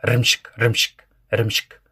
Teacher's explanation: Там как будто бы между р, м, ш и к ничего нет. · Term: неполноценный звук